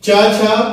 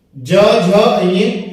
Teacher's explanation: च छ आपका अघोष है, ज झ अ सघोष है।